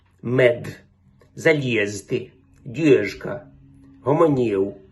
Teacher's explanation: приголосні вимовляються чітко і не оглушуються